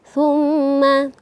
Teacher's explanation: warahmatullahi wabarakatuh ayat yang kelima tumma ini kita lihat sama-sama ee ada mim yang bertasydid sehingga tingkatan dengungnya tingkatan gunahnya itu paling atas ee dan betul-betul didengungkan sehingga ketika kita baca nah terasa dengungnya